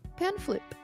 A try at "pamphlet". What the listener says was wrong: Not flip. It's a T. Pamphlet? You say it, you do the P soft enough that it doesn't register as a P in my brain.